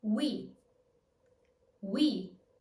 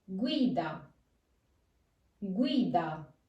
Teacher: since U is the weak vowel, it will do the W sound.